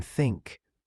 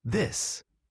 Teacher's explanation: such as the th in think, voiceless, versus this, voiced